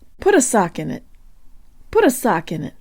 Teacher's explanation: The T in put is just like a flipped Russian R.